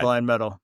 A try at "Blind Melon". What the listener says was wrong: First of all, Blind Melon. You called him Blind Metal.